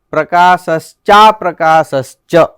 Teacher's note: સોહમિજ્યા વિશુદ્ધાત્મા પ્રજાલોપનિમીલિત પ્રકાશશ્ચ, પ્રકાશશ્ચ એટલે અહીંયા એવું છે, પ્રકાશશ્ચ અપ્રકાશશ્ચ એવી રીતના છે. એટલે પ્રકાશશ્ચ અપ્રકાશશ્ચ એટલે બે અ મળીને દીર્ઘ આકાર થઈ ગયો, પ્રકાશશ્ચા પ્રકાશશ્ચ એવું.